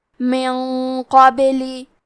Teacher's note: کیونکہ حرف القاف حروف التفخیم میں سے ہے تو ہم یہ غنہ کو بھاری آواز میں ادا کریں گے. من قابلی.